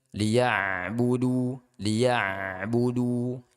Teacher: Kemudian dikata liya'budu liya'budu, ya di sini ain ini harap diperhatikan jangan sampai huruf ain itu dia terhenti terputus. Kemudian jangan sampai huruf ain itu menjadi qalqalah